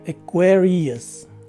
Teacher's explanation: the stress is in the second syllable the first letter a takes a swa sound and the second